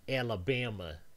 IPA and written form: ˌæləˈbæmæ (Alabama)